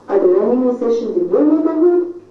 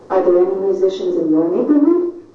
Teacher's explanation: We go up and roar, and because we have more unstressed syllables following, our voice will continue to go up. So there's a bit of a drop, and then we continue to go up, up, up, up, until the end of the question.